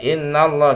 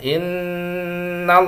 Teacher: in itu gunnah, nantinya bertasydid maka ditahan bacanya, jangan buru-buru ya, jangan innallah, salah innallaha, in ya, itu gunnah, setiap nun atau mim yang bertasydid dibaca gunnah ya.